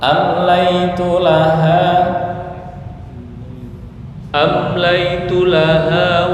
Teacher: Mohon maaf, am itu idhar, jangan dengung.